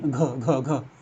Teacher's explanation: घ व्यंजन के वर्ण का उच्चारण स्थान कंठ। कंठ, सही बात है, कंठ की तरफ से, कंठ की ओर से इसकी ध्वनि आती है।